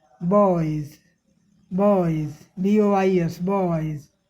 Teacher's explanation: ये दोनों ध्वनियाँ ब और ज, ये दोनों ध्वनियाँ गले में कंपन से उत्पन्न होने वाली ध्वनि हैं, लेकिन यहाँ दोनों में कंपन नहीं हो रहा है। बॉयज़ उच्चारण के अंत में आंशिक रूप से घोषित।